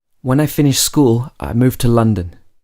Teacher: can you hear how my voice is rising and then falling again in pitch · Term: rising intonation